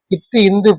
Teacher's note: ரெண்டுமே நுனி நாக்கு வந்து மேல்வாய் பல்லை பொருந்துவதால் பிறக்கக்கூடியது. அதனால அத வந்து இரெழுத்துக்கள்னு சொல்லிக்கிறலாம். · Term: இன எழுத்துக்கள்